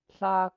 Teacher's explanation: this KW at tlak, you just round your lips and breathe out the K sound